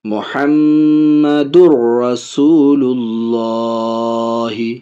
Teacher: دال کو را میں ملا رہا ہے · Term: ادغام